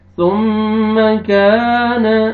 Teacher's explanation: الف سے پہلے زبر ہے، کاف کو آپ نے کھینچنا ہے ایک الف کے برابر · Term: الف مدہ